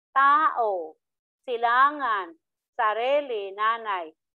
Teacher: Pero, ang diin niya, ang bigat ng inyong pagbigkas ay nasa ikalawang pantig mula sa hulihan. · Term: malumay